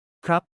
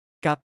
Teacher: The disappearing act, when consonants go missing. In Thai, when R or L is the second consonant in a syllable, it often vanishes into thin air in everyday speech. The polite particle ครับ that men use becomes a simple กับ much easier to say rapidly in conversation.